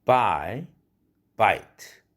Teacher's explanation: 예를 들어보면 buy, bite, R라는 모음이 음절 주음인 모음이 bite보다는 buy 할 때가 그 아 발음이 훨씬 길어졌다는 사실을 여러분들은 느낄 것입니다.